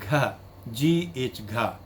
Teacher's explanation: It is velar and voiced and aspirated sound.